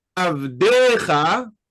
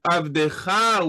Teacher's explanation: avdecha with a penultimate accent, as opposed to avdecha with an ultimate accent, putting the accent on the second to last syllable is a very common phenomenon in Hebrew when you have a certain word at the end of a clause.